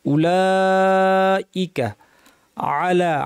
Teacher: আইন কে একটু গলায় চাপ দিয়ে বলতে হবে